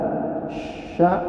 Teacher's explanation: menunjukkan ada angin yang ditekan kuat di tengah lidah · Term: huruf shin